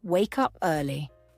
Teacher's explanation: we pause just a little bit after wake up for emphasis. We're helping to create a rhythm in the sentence.